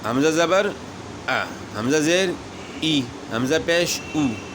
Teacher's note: زبر جو ہے یہ آدھے الف کی آواز ہے، زیر آدھی یا کی آواز ہے، پیش آدھے واؤ کی آواز ہے